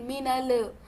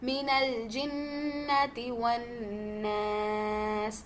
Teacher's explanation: लाम सुकून पे थोड़ा सा कोशिश करें कि थोड़ा सा स्टॉप होते हुए लाम को बाउंस बैक ना करें।